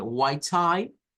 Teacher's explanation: es Unión de la a del español con la i corta del inglés y se genera un diptongo